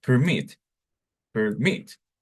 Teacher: two syllable with stress on the second syllable